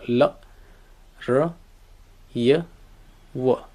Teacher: Semi vowels किंवा ॲप्रॉक्झिमेंट्स म्हणतात त्यांना, वॉवलसारखा त्यांचा उच्चार केला.